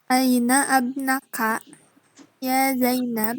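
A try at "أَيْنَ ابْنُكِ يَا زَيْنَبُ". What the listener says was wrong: Enggak, alifnya jangan dibaca. Jangan fathah. Jangan dipatahkan.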